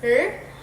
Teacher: This can be a retroflex or approximant liquid, where the tongue either curls back slightly or comes close to the alveolar ridge without touching it, allowing a smooth flow of air.